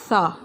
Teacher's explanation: تسمیہ کے بعد سب سے پہلے یہ ثا کی ادائیگی ہمیشہ نرمی سے کی جائے گی، اس میں سیٹی کی آواز نہیں نکلے گی۔ جب میں ثا ادا کرتی ہوں تو اپنی زبان کی نوک کو دانتوں کے درمیان دبا کر ہلکا سا، پھر اس کے بعد میں کہوں گی ثا، تو سیٹی کی آواز نہیں آئے گی۔